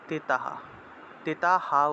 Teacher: তিতা হা উচ্চারণ হবে, কারণ বিসর্গ আছে তো, বিসর্গের পরিবর্তে হ উচ্চারিত হয়, আর আগের অক্ষরের সাথে আকার আছে, আকার থাকলে সেই আকারটা যুক্ত হয়।